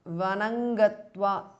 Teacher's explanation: Sutam ends in Anuswara followed by Ga, which belongs to the Kavarga. So the Anuswara changes to Nga. So Sutang Gangakule because of Sandhi.